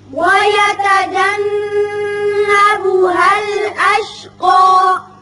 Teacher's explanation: یہاں نون مشدد ہے، غنہ کریں گے۔ اشقا اوپر کی طرف ایک الف کے برابر آواز کھینچیں گے وقت کی صورت میں، اور وصل کی صورت میں اشقى الذی ہوگا۔